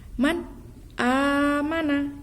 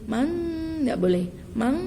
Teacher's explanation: Izhar di sini artinya jelas. Jelas. Jadi harus tidak boleh berdengung, harus jelas.